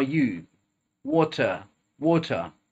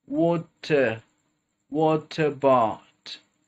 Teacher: T is adjoining to the schwa sound at the beginning of the next word